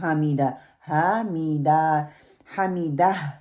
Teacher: ہا کلیئر کرنی ہے اینڈ پہ، اس کو 2 کاؤنٹ نہیں کرنا ، ہا کو ہا میں نہیں بدلنا انشاءاللہ تعالیٰ۔ اب اپنے